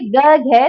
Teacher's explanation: जब आप बोलेंगे गघ तो वो कंठ से बोला जाएगा